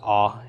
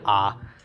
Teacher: They pronounce it as a short O, so the O is in pot, whereas the patach is the short A as in father